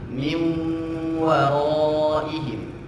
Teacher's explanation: Nah, seharusnya tadi bi gunnah. Ingat, bukan sekedar dileburkan nunnya, tapi harus disertai dengan gunnah ya. · Akan tetapi diingat di sini nun sukun bertemu dengan waw, maka ditambah gunnah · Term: idgham bi gunnah